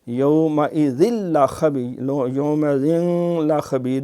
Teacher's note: ہم تنوین کو شو نہیں کریں گے، یعنی اس کا نون کو شو نہیں کریں گے